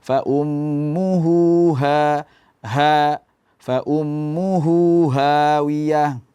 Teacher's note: Hawiyah seperti tadi, ha juga harus bergetar dada, ada suaranya, bukan cuman angin saja.